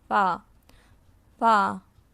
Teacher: اگلا حرف ہم سیکھیں گے فا. فا کو ہم نیچے کے ہونٹ کو اوپر کے 2 دانتوں کے ساتھ لگا کر ادا کریں گے